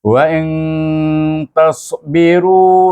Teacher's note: dibaca dengan ifa hakiki antara nun dengan huruf ta ini, antara izhar dengan idgham. Ya, bukan izhar, bukan idgham, tapi tengah-tengah.